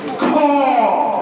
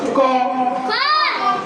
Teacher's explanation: >> বাতাস হবে না। কিন্তু খবরের সময় অনেক বাতাস বের হবে